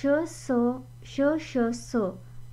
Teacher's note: श, स, श, श, स हे जे घर्षण आपलं जे उच्चारताना होतंय ना, त्यामुळे याला घर्षणे किंवा उष्मे असं बोललं जातं